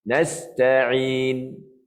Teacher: Nasta'in, ain. Tengah kerongkong huruf ain.